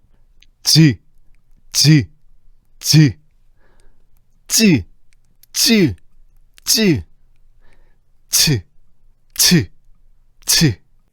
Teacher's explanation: 쯔, 쯔, 쯔, 쯔, 쯔, 쯔, 츠, 츠, 츠. 분석해보면 일단 혀가 입천장에 붙어서 공기를 막고 있다가 파열이 일어나. 여기까지는 파열이지. · 글자 그대로 파열과 마찰이 섞여서 발음된다는 거지. 시작은 파열이지만 파열이 이루어지고 나면 곧바로 마찰이 일어나. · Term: 파찰음